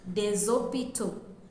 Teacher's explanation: If we are using the indefinite article in plural plural sorry we will say desopto and you will hear the last s pronounced as zed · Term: liaison